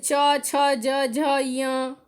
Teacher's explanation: जैसे च, छ, ज, झ, य, जिसमें सिर्फ तालु का स्पर्श कर रहा है। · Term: च वर्ग